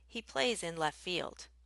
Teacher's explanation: the T pretty much disappears